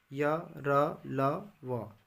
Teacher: मुख जो है वो संकुचित हो जाती है और वायु स्वरों की भांति बीच से निकल जाती है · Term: अंतःस्थ व्यंजन